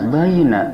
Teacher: Baina ini adalah harap lin, bukan madlin, tapi harap lin, yaitu harap yang dibaca dengan lemas, baina tanpa panjang, karena bukan madlin